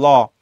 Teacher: তুমি উচ্চারণ করো ল দেখো তোমার জীবটা কিন্তু উপরের যেই তালুটা সেটাকে টাচ করে